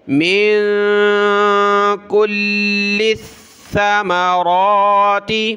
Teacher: کاف لام پیش کل، لام ثا زیر لث، ثا زبر ثا، ثا پر زبان نکالیں